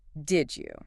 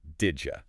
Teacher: D and Y turning into a J sound, that is a massive shift